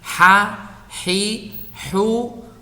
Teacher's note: hamas itu berarti udara atau nafas itu terlepas